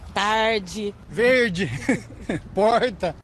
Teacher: como que é o sotaque daqui é o r bem puxado